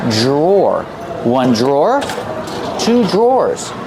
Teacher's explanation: The pronunciation is not like a spelling pronunciation. Dr. makes a J sound. J plus the R together. J drawers or like door and floor.